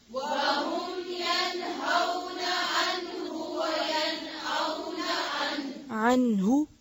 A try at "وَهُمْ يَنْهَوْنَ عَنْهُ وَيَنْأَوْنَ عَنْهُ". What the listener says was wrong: عنه लंबा नहीं करेंगे عنه وهم ينهون عنه وينأون عنه